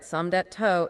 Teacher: So it's some days toe, not some days dito. And the J at the end of Somdej is becoming a harder T or D sound